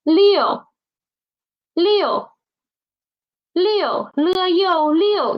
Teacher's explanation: Please don't pronounce the initial as okay. It's not N. Don't use your nose. It's L.